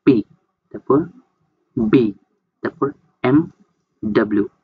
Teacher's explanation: মানে এই শব্দগুলো উচ্চারণ হবে দুইটা ঠোঁটের মাধ্যমে। সবার প্রথম দুইটা ঠোঁট উপরের এবং নিচের ঠোঁটটা প্রাইমারি আর্টিকুলেটর হিসেবে কাজ করবে। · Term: বাইলাবিয়াল কনসোনেন্ট